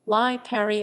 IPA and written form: ˈliːpari (Lipari)